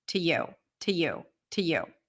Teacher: It's still a schwa. When the to is pronounced before a consonant, like in the phrase to you or to go or to love, then the oo sound becomes a schwa.